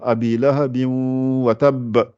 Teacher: Et reste deux temps. Reste deux temps en préparant le waw qui sort avec les lèvres arrondies. Et il y a une bonne partie qui sort par le nez.